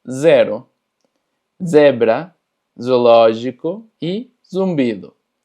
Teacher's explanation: La letra Z o Z es simplemente aprender que se pronuncia como Z, un poquito más forzado, con esa vibración.